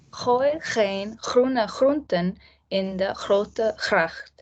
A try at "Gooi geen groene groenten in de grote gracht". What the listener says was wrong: Yeah. No, very good. So you pronounced the first one perfectly.